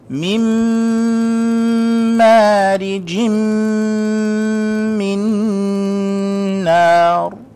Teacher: Min noon sakina. Immediately after it is a mim. So therefore, that noon goes away. we combine it with the meme takes over, and we hold it for 2 seconds and make the ghunnah sound. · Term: idgham with ghunnah